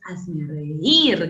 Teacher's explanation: con acento en la I, en la débil, en la cerrada. Eso es hiato acentual.